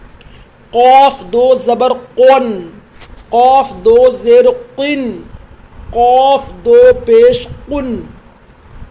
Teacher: بڑا قوف یہ حروف مستعلیہ میں سے، اس کو موٹا کر کے پڑھا جائے گا